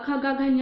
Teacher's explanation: क वर्ग में जो भी आते हैं, क ख ग घ जो भी आते हैं, वो उसका उच्चारण कंठ से होता है।